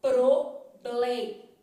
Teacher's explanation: eu falo L que é uma consoante alveolar então sua língua vai lá atrás do seu dente